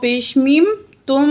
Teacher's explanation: غنہ کس کو بولتے ہیں، ناک میں آواز لے جا کر ٹھہرانے کو، ٹھیک ہو گیا۔ تو ہم یہاں میم کی آواز کو ناک میں لے جا کر ٹھہرا رہے ہیں